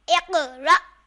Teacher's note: यहाँ क़ाफ पर जज़म साकिन है तो इस वजह से क़ाफ में कलकला होगा और अलिफ पर अगर कोई हरकत आ जाती है तो वो हमज़ा बन जाता है, इसलिए हमज़ा साकिना को झटका देकर पढ़ेंगे इक़रा।